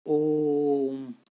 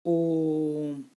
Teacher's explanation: ठीक है, जैसे ओम में जो है, ओ के पीछे हमने 3 लिखा हुआ, फिर मौ लिखा हुआ है ना, मौ हलंत कर रखा है। तो जो ओ है, हमें इसको 3 गुना समय तक बोलना है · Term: प्लुत स्वर